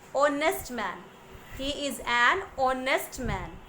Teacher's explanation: it is beginning with the letter H, which is a consonant, but when we pronounce it, the pronunciation has the vowel sound O.